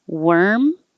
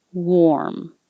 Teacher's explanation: worm, my lips don't close, don't get as small like a circle. Were. But for warm, they get really small. Warm. That's a huge difference.